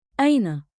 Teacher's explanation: One beat, like, in, with a light catch at the start.